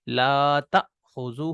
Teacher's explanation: جیسے لا تأخذہ، ٹھیک ہے، تو اب دیکھیں ہم اس کو لا تأخذہ نہیں پڑھ رہے، اب جھٹکے کے ساتھ پڑھ رہے ہیں، مطلب یہ حمزہ بن گیا. اور ہم نے کہا تھا کہ حمزہ اپنی اصلی شکل کے علاوہ دوسری شکلوں میں بھی آ سکتا ہے، تو یہاں پر حمزہ الف کی شکل میں آیا ہوا ہے لیکن ہے یہ حمزہ.